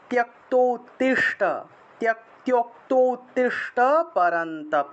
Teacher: তয়ের সাথে জফলা থাকায় তীয় উচ্চারণ